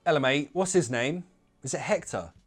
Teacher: I used glottal T's everywhere, but I didn't drop the H in Hector